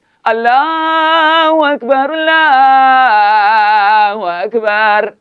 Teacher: tinggikan pangkal lidah supaya bunyi dia tebal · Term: taghlid